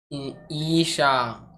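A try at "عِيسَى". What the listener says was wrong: आइन से ईसा, ये छोटी सी। हाँ, नुक्ता वाला सीन नहीं है। वाव मद्दा इसमें खींचना है। दोनों को खींच कर पढ़ना है ना।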